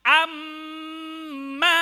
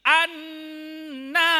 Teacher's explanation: Nun dan mim tasydid harus dibaca dengung yang lama. Lamanya sama dengan lamanya mad tabi'i. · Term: dengung dengan lama